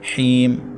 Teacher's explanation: ہا کے بعد یا مدہ ہے، 1 الف تک کھینچیں گے۔ اور یہاں پر وقف بالاسکان ہوگا۔